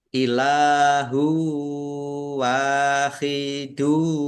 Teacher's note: Dhammah tanwin bertemu dengan huruf wawu, bacaan idgham bi gunnah masuk dengan mendengung, yaitu mendengung wawu, ditahan biar tampak mendengungnya.